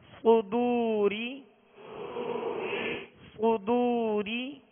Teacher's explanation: صدو، ہونٹوں کو گول کریں گے تو پیش صحیح ادا ہوگا. صدو، را زیر ری، را کے نیچے زیر ہے، را کو باریک پڑھیں گے.